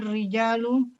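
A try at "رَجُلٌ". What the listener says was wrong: Rajulu, bukan rijal.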